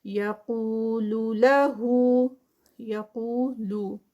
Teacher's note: قو قاف ہیوی اور ساتھ میں واو مدہ کا 2 کاؤنٹس کا اسٹریچ